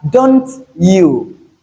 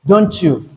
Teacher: So when you have t which is an alva sound at the end of the first word then the next word begins with y which is a palal sound. the T and Y combine to give us ch in connected speed.